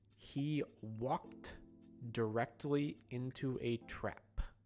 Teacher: So you might have noticed something when I said walked. You might have heard a T sound at the end instead of a D sound, which is how it's written.